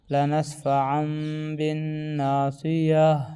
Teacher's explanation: رکنے کی حالت میں ہا بن جاتی ہے